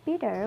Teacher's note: Then in bitter, we find flap T.